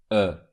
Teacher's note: try to say the closed e sound rounding your lips at the same time. This is a closed version of this sound.